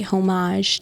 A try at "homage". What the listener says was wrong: Homage? don't pronounce the H.